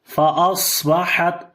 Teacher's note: فطاف عليها طائف من ربك وهم نائمون فأصبحت كالصريم فأصبحت. The swad we did in heavy sound due to isti'la letter, and also we make a whistling sound